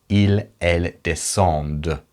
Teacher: we need to pronounce that D because of that ENT that follows, but we don't pronounce the ENT